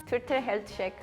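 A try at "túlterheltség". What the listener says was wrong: Don't forget in the beginning, you say a little bit like tul, tul. You can make it longer and more sharp, like tul.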